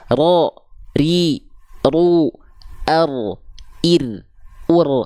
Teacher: ro ri ru Ar Ir ur tetap ada getarannya dan dia tegas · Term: getaran huruf ro